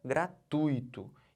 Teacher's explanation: Eu estou botando toda essa sílaba aqui, ó, o tui, como sílaba tônica. Eu não posso separar Não, não posso fazer isso não.